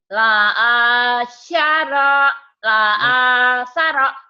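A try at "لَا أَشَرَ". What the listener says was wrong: Shinnya belum keluar ya, kayak Bu Inung tadi hutangnya. La asyara. Shin. La asyara.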